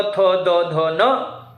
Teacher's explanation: अब क्योंकि इन वर्णों का जब हम उच्चारण करते हैं, जीभ जो होती है यह दांत को स्पर्श करती है। तो जब भी हम उच्चारण करते हैं तो थ, द, ध, न इन वर्णों को, तो जिह्वा दंत को स्पर्श करती है। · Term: दंतव्य